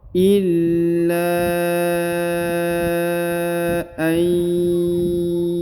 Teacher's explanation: Maka setelah kita masuk ya lalu ditahan, ditekan, kemudian dipanjangkan lagi 5 harokat ya, karena di sini terdapat tanda bacaan panjang 5 harokat, yaitu garis yang ini ya. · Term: tanda penekanan